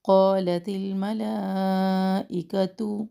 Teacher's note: قاف کے ساتھ آ رہا ہے تو الف مدہ اپنے ما قبل کے تابع ہوتا ہے، یہ موٹا پڑھا جائے گا